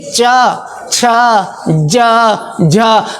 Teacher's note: चवर्ग के उच्चारण में आपकी जीभ करती क्या है, ताल में जाके चिपकती है